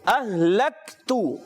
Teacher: हा की अदायगी जो होती है ये हलक के नीचे वाले हिस्से से, और ये हा हम इसको समझाने के लिए कहते हैं मोटा हा।